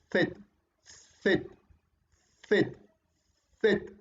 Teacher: Interdental, obviamente, porque la lengua se ubica entre los dientes. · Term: interdentales